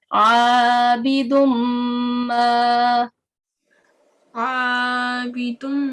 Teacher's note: This is not the rule of concealing, or this is the rule of assimilation applies on this portion. Okay, we will assimilate this dal carrying a tanween. Okay, we will join it with the mim mushaddad. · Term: partial assimilation